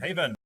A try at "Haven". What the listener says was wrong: He said he have to say Haven. H silent.